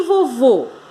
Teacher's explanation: uma oxítona porque a sílaba mais forte é a última